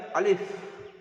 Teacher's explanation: 18 নম্বর মাখরাজে মুখের খালি অংশ হতে উচ্চারিত হয় অর্থাৎ 2 ঠোঁট লাগবে না